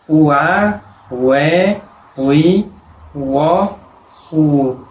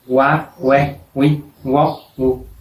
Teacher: Cuando tiene sonido de U, suena como una U separada de la otra vocal, no como una U superpuesta a la otra vocal. Tiene sonido de UA, UE, UI, UO, U.